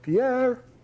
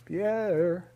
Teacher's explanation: the vocative chant goes put a high on the stressed syllable put a low at the end